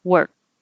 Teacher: And you don't need to say the K